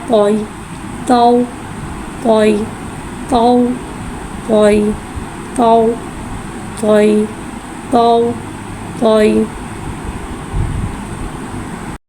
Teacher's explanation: या साकिन है, या साकिन से पहले ज़बर हो रहा है, यालीन हो रहा है, लिहाजा यालीन को बगैर खींचे बगैर झटके दिए नरमी से मारूफ पढ़ेंगे